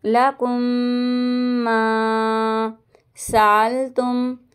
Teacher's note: میم ساکن کے بعد میم آ رہا ہے اس لیے گنہ کریں گے